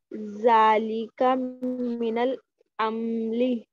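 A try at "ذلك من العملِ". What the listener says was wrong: अमली नहीं है, मीम पे जबर, अमली। जालिका मिनल अमली, जालिका मिनल अमली।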